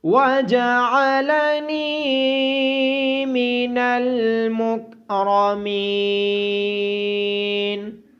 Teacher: نون کے بعد یا مدہ ہونے کی وجہ سے نون کو لمبا کریں گے۔ را کو موٹی آواز کے ساتھ پڑھا جائے گا اور میم کے بعد یا مدہ ہونے کی وجہ سے میم کو بھی لمبا کیا جائے گا۔